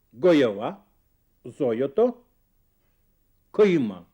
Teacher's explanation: Оно выражается в следующем. «Л» перед гласными произносится как «и». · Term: сладкоязычие